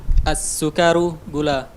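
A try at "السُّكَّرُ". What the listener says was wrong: As-sukkaru. Kafnya di tasdid.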